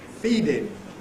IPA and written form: ˈfiːdɪn (feeding)